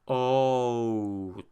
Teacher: it starts with an O, ends with an oo. That is a diphthong, and they are abundant in Quebecois French.